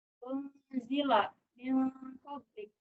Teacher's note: Jadi nun matinya itu dia disamarkan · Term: ikhfa